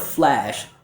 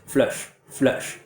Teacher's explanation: So the mistake I hear with this word is that a lot of students don't get enough open quality for the American ear to hear the ah like bat sound. So instead of flash, a lot of students will say flush, flush.